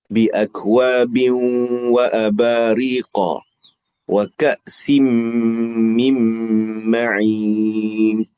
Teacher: Idgham al-ghunnah. Dengung dua harakat.